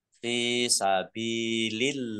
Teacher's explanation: Qaf fathah alif mat tabi'i fi fa kasroh ya sukun mat tabi'i panjang 2 harokat sabilillahi fa kasroh ya sukun mat tabi'i panjang 2 harokat juga. Allahnya dibaca tipis karena di harokat di depannya kasroh.